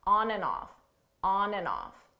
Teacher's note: Notice here, the and, you don't hear it at all. It sounds just like a On, off.